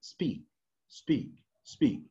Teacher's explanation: it's not aspirated it's not aspirated here because it's preceded by the S sound